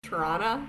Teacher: they don't pronounce the R's in their words, so it's Toronto when you're there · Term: drop the R